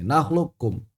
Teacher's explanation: Qaf itu aqsal lisan fauq, pangkal lidah atas, bertemu dengan langit-langit yang lunak. Sedangkan kaf asfalu, pangkal lidah yang bawah, bertemu dengan langit-langit yang lunak dan yang keras. Jadi beda. Antara qaf dengan kaf itu beda.